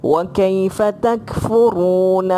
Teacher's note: أعوذ بالله من الشيطان الرجيم بسم الله الرحمن الرحيم وكيف تكفرون وأنتم تتلى عليكم آيات الله wa kaifa lembut, sebab apa? Sebab dia lin tu, baris fathah jumpa ya mati, yang tu kita panggil lin, lin lembut.